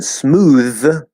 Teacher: smooth is actually a voiced TH